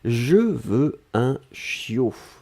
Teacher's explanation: On ne prononce pas le T final.